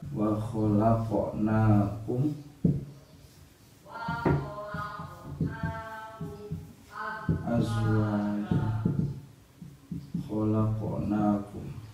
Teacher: Ketika huruf qalqalah itu berada di tengah kalimat, misalnya seperti contoh wa khalaqnakum azwaja, khalaqnakum, huruf qaf. Ini pantulannya sedikit atau disebut juga sebagai qalqalah sughra. Nah, huruf qaf ini termasuk huruf bagian isti'la atau disebut juga huruf isti'la dalam sifatul hurufnya.